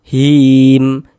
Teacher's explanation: Ini kalau kita berwakaf, kalau berhenti di huruf mim kita baca him. Jangan dibaca himi, jangan. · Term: mad arid li sukun